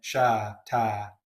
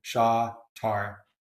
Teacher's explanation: I pronounce my R's, most Americans do, the so-called rhotic accent. most English do not.